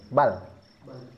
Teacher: Tekanannya tidak begitu kuat dan tidak begitu lepas tapi ada sedikit tekanan.